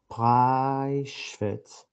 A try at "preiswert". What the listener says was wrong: Orada şu harfi yoktu.